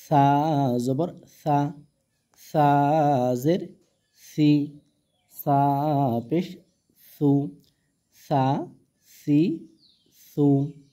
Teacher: সা জাল এগুলো জিহ্বার আগা থেকে কি হয়, পাতলা করে উচ্চারণ করতে হয়।